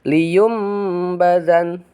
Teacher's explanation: Liyum bazan asalnya liyun badan ya, asalnya liyun bazan. Karena nun mati bertemu dengan huruf ba, maka si nunnya digantikan dengan bunyi mim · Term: iqlab